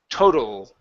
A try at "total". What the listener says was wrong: Okay, almost. Yeah, so your tongue is still kind of moving back, and you're pronouncing the vowel instead of the o sound. So it sort of feels like you're choking on your tongue a little bit. Okay, so that's how you know when it's right.